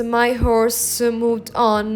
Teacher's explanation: the usual series of iambs, so the unstressed syllable followed by the stressed syllable, is broken